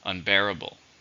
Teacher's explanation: How many syllables are in unbearable? 4. Stress on the second.